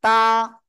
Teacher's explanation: জিহ্বার আগা সামনের উপরের দুই দাঁতের গোড়ায় লাগিয়ে উচ্চারণ হবে